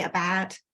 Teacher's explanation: open flat mouse vowel that is typical of Cockney even today